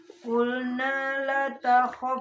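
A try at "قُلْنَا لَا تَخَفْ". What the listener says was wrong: La panjangnya qulna la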